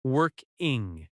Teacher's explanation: Isn't working has stress on work